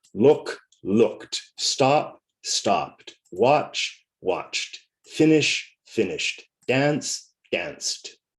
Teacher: the t after a voiceless sound